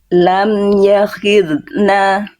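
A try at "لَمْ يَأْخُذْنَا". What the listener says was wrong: Tebalkan lagi. Lam ya, rasakan lidah dalam, pangkal lidah naik. Huruf tebal itu dia syaratnya pangkal lidah naik.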